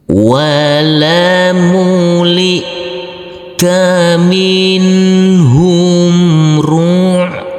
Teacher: Huruf ain yang bersukun ini harus kita alirkan.